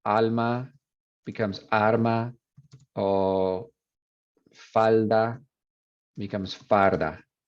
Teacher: rotacismo, which is L to R